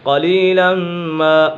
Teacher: میم مشدد ہے، میم مشدد میں ہمیشہ غنہ ہوتا ہے۔